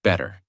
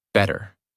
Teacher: In the first version, your mouth stops more. In the second version, the sound flows more smoothly. That smoothness is the American feeling.